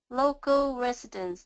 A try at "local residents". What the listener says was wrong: Oh, very good, very good. One more time.